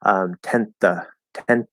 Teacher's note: When it comes to something like the 10th of March, okay, so we have that N. We're very likely to just do a dental T here because it's a voiceless TH again.